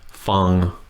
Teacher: Fang, flat tone, means to listen.